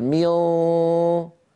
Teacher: هل يقرع مخرج النون كما كان يفعل في الإظهار؟ لا، طرف اللسان الآن موجود على أسفل الصفحة الداخلية للثنايا السفلى اللي هو مخرج الصاد، مهيئ على مخرج الصاد، لكن ما نطق صادا